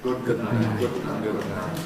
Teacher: we make a single articulatory gesture with the tongue and adjust the soft palate in the middle. It starts raised for good, then it has to come down for the end. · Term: nasal release